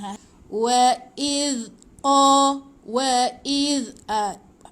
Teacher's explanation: Zal ingat hujung lidah di antara dua gigi. Kalau susah cuba gigit dulu hujung lidah di antara dua gigi depan.